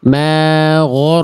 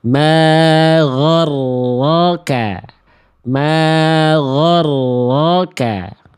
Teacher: gin dan ro dua-duanya tebal tapi enggak ada yang monyong